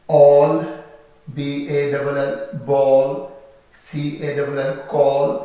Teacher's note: A के बाद L होगा तो A जो है वो ए साउंड नहीं देगा, ये O साउंड में चला जाता है